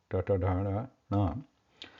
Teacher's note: So these Murdhanya sounds, they are pronounced by rolling back the tongue towards the top crown area inside the mouth. That top crown area is called Murdha in Sanskrit.